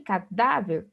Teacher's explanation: o da é a sílaba mais forte, a sílaba tônica